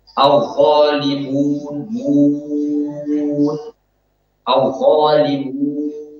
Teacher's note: gunnah itu harusnya sudah terputus, sudah hilang ketika kita selesai mengucapkan mim